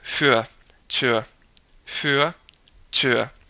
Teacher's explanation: Another couple words, für, and Tür. Für, notice how the R is pronounced. It's kind of just a tightening of the throat. I'll say für, Tür, für, Tür.